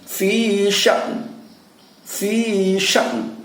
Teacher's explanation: Jadi suara nunnya adalah suara yang dibentuk di dalam rongga mulut yang nyaris tidak terdengar.